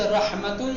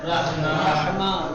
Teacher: جب اس پہ ٹھہرا جائے گا تو یہ تا ہاں میں بدل جائے گا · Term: وقف ابدال